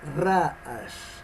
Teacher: Y en estas combinaciones encontramos la primera palabra, la palabra número 1, que dice Ra'ash, y Ra'ash es ruido, no Ra'ash, sino Ra'ash. Ra, o sea, el acento lo lleva en la primera sílaba